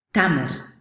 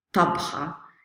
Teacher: the word for date, tamr, starts with just the regular t, but the word for the meal, tabha, starts with an emphatic t